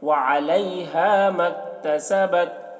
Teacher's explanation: کاف میں اور تا میں آواز کو ٹکرانا نہیں ہے ورنہ قلقلہ ہو جائے گا